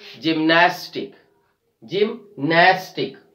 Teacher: We are stressing on the second last syllable, gymnastic.